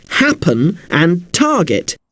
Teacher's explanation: Both of these words are actually a bit unusual because the stress is on the first syllable of the word. The stress is on the hap bit of happen and the tar bit of target.